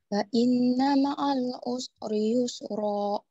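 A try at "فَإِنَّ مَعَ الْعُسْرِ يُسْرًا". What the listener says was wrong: Tarik lagi. Fa inna ma'al usri yusra gitu.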